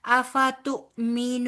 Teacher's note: हमजा साकिन है लिहाजा इसको झटके के साथ अदा करेंगे · حمزہ ساکن ہے لہٰذا اس کو جھٹکے کے ساتھ ادا کریں گے